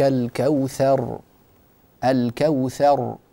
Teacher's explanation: يراعى في هذه السوره تفخيم الراء في حاله الوقف وبيانها